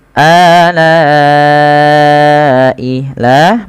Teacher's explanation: Pada dasarnya la dipanjangkan dua harakat karena datang setelahnya huruf hamzah dan hamzah tersebut pada satu kata alai maka lanya dipanjangkan sepanjang empat atau lima harakat dan kita hukumnya dengan mad wajib muttasil